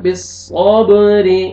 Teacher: وتواصوا بالصبر، صاد کو موٹا کر کے پڑھیں گے اور با قلقلہ، حروف قلقلہ میں سے ہے، ڈبل ساؤنڈ آئے گا۔ بالصبر، را کے نیچے کسر ہے، را کو باریک پڑھیں گے۔